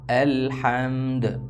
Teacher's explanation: حمزہ لام زبر ال، حامیم زبر حم، الحم، دال پیش دو، الحمد، وقفاً الحمد، الحمد۔ دال حروف قلقلہ میں سے ہے، اس لیے حرکت دے کر ہلا کر پڑھا جائے گا۔